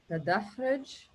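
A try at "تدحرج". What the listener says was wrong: Almost there. Ja, it's got also a fatha.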